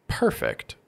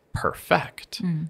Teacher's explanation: if I say perfect with my stress on the first syllable this is actually the adjective